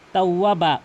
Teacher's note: এখানে কিন্তু অবশ্যই বাকে এক আলিফ টেনে পড়বেন, তাওয়াবা, অধিকাংশ লোক তাওয়াবা মানে বাকে তাড়াতাড়ি ছেড়ে দেয়, এখানে কিন্তু এক আলিফ টেনে পড়তে হবে ইয়াওয়াজের কারণে।